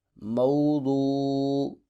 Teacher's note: مو پر لین ہو رہا ہے، نرمی سے ادا کریں گے۔ وو پر مدہ ہو رہا ہے، ایک الف کے برابر لمبا کریں گے کیونکہ واو ساکن سے پہلے پیش آ گئی ہے۔